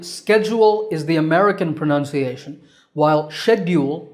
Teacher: again the first syllable is stressed in both Accents